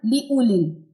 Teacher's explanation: یہ واو سائلنٹ ہے ٹھیک ہے واو نہیں پڑھا جائے گا واو بالکل خالی ہے اس پہ جزم کی بھی علامت نہیں